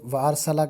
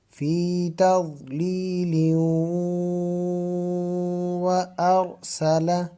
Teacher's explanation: اگر اس کو فی تضلیل کو آگے وارسلہ کے ساتھ ملائیں تو پھر یہاں پر غنہ بھی ہوگا